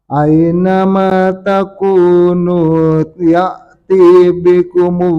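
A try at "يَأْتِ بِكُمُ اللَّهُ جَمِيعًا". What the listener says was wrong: Ya-tinya jangan diayun. Ya'ti bikumullahu jami'a.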